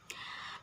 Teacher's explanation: Yang mana ikhfa hakiki di sini adalah nun sukun atau nun mati yang bertemu huruf sin. Nun sukunnya harus dibaca samar. Ikhfa itu artinya samar-samar.